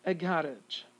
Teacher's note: A schwa here between the R and the G.